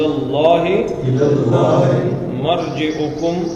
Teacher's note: اللہ کا نام موٹا کہ پتلا؟ موٹا۔ کیوں؟ پیچھے زبر آ گئی۔